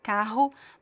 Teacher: the R could be a little bit softer or stronger, carro, but always on your throat